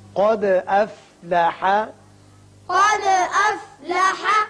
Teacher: دال ساکن ہے، اس کی صفت قلقلہ ادا کریں گے اور قاف کو پر پڑھیں گے